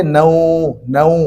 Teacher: نوم نہیں بولیں گے، نو، نو، ہونٹوں کو گول کریں گے